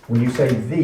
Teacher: When you say the, you put your tongue right behind your upper teeth to make the the. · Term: THs